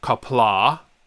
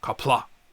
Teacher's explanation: copla because it's got the apostrophe on the end it's kapla the a is stunted a glottal stop if you will